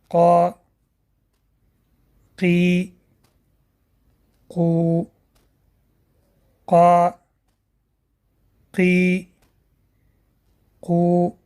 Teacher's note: Каф образуется между основанием языка и мягкой неба. Тоже произносится твердо.